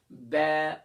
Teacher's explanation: अब देखें, ये आप जब मिरर में देखेंगे तो आपको सही महसूस होगा कि दोनों होंठ के गीले हिस्से को मिलाकर सख्ती से अदा कर रहे हैं